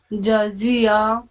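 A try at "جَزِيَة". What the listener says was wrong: اس میں فرق واضح کیجیے جزیعہ جی اور کیجیے جزی جزی ججی نہیں جزی جزی جزیعہ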